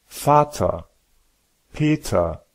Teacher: si la fin est ER, bien que ER ne soit pas faux et serait parfaitement compris, il est plus naturel de le raccourcir à A